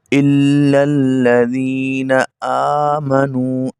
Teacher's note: الا الذین آمنوا کچھ پڑھتے ہیں آمنو، لیکن یہاں پہ حمزہ کھڑی زبر آ، اس کو تھوڑا لمبا کریں گے ایک الف کے برابر. الا الذین آمنوا اگر امنو پڑھیں گے تو پھر غلط ہو جائے گا.